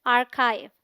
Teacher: The AR sounds like R in car. This is the stressed syllable. The CH has a K sound.